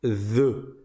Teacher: tu sors la langue et tu fais en sorte qu'elle tape sur les dents du haut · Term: zel